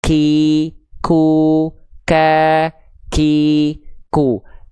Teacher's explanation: Ini yang menyebabkan kenapa huruf qaf kita sering tertukar, keluar percikan nafas menjadi huruf kaf, karena teman-teman melafalkan qafnya kurang dalam. Yang teman-teman lafalkan di sini jadinya huruf kaf.